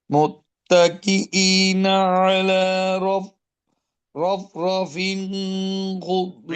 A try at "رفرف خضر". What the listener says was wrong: এখানে কেন টান দিবেন? রফ রফিন খুদরিন, এখানে টান হবে না, ইজহার ইজহার। আগে ভুলটা আইডেন্টিফাই করেন।